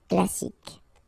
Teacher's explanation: You don't insist on the final E, so you get K as the last sound.